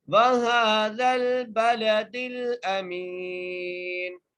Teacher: بَلَدِ الْأَمِينَ، حمزہ کے اوپر زبر ہے، میم کو ایک الف کی مقدار کھینچ کے پڑھیں گے، نون کو وقف کی صورت میں ساکن کر دیں گے